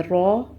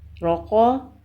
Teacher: را پر زبر یا پیش ہو تو را کو موٹا پڑھتے ہیں